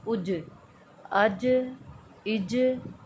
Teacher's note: ہم نے جیم کو جھٹکا لگا کر ادا کرنا ہے